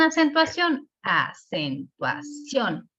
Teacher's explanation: la sílaba tónica en acentuación está en la última